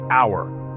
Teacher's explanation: even though H is a consonant when we pronounce our it begins with a vowel sound like hour so we say an hour not an hour another